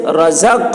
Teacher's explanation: قاف کی آواز ٹکرائے گی اپنے مخرج سے · قاف حروف قلقلہ میں سے ہے اور اس پر جزم ہے تو قاف میں قلقلہ ہوگا